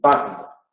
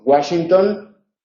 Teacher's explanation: Luego, la W tiene dos pronunciaciones, en las palabras de origen alemán como una B y en las palabras de origen inglés como el dígrafo gu